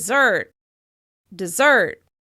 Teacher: The first syllable is more subtle and almost disappears behind the stressed one: syllable: desSERT, desSERT.